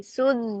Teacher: জিমটা পুরো জিবের মাঝখান দিয়ে উচ্চারণ হবে, জিহ্বার মাঝখান দিয়ে।